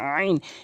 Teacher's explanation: আইন হলকের মাঝখান থেকে আইন।